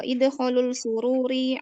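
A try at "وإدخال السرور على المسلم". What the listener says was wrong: Sin itu huruf samsiah, jadi disambung ya. Wa idkhalus sururi. Wa idkhalul, keliru. Sin itu huruf samsiah.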